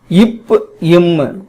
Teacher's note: மேல்ுதடும் கீழ் உதடும் பொருந்த இவை தோன்றும்